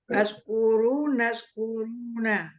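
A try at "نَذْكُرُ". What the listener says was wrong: Nggak pakai na, Bu. Nazkuru.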